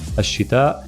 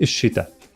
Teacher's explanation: In MSA, we have that glottal stop at the end.